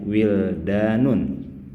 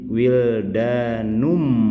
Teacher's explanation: Masuk ke huruf mim, digabungkan ke huruf mim. Kemudian setelah digabungkan jangan lupa sertakan ghunah, sertakan dengungan yang panjangnya kurang lebih dua harakat.